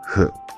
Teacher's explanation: H is a glottal sound. This means that we produce the sound out of the glottis. The glottis is the space between the vocal cords in the larynx.